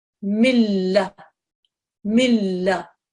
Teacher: Sahad will be assimilated into the next letter which basically means you drop the noon you just don't pronounce it